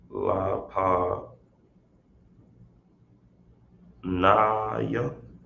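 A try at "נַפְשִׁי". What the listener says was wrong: Yeah, but connect the pa with the na. Say that again. Napanyawa.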